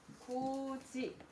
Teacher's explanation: 구개음화 그대로 적용이 돼서 구지 이렇게 발음이 되겠죠. 그러면 연음 후에 구개음화 규칙이 적용되었다라고 이해하면 됩니다.